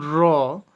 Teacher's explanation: যখন কোনো বর্ণ উচ্চারণের সময় জিহ্বার অগ্রভাগ দাঁতের গোড়ায় কম্পিত হয়ে উচ্চারিত হয়, তাকে কম্পনজাত বর্ণ বলে।